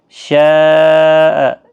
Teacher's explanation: یہاں پر بڑی مد ہے، مد متصل، 4 الف کی مقدار کے برابر کھینچ کر پڑھیں